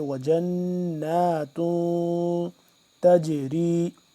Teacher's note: اس کے اندر کو آواز ناک کے اندر لے جا کر پڑھیں گے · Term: اخفا